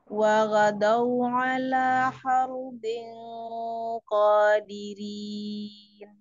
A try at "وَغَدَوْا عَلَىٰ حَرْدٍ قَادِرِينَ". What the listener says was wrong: Nah, ya, masya Allah, barakallahu fiik. Ahsanti.